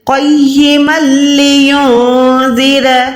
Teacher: میم کو لام کے ساتھ ملانا ہے بغیر گننے کے۔ اگر ہم من پڑھیں گے تو وہ گننے میں آ جائے گا، لیکن یہاں پر جو ہے ادغام ہے بغیر گننے والا، یعنی یہاں پر آپ نے 2 زبر کو ادا نہیں کرنا، بلکہ کیسے پڑھنا ہے؟